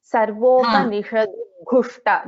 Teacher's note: alpa prana da and mahaprana gha, and both the shas in this verse are shanmukha sha, okay.